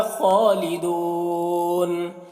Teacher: یہاں پر وقف کریں گے تو مد عارض وقفی ہوگا، اس میں طول توسط قصر تینوں جائز ہوتا ہے · ہم میم میں یہاں پر اظہار شفوی ہو رہا ہے، فی میں یا مدہ ہے، ہا میں الف مدہ ہے، خالدون خا کو پر پڑھیں گے اور کھڑا زبر ہے، کھینچ کر پڑھیں گے۔